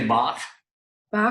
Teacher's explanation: you're going to say it with the sound in the back of your throat, like you're clearing your throat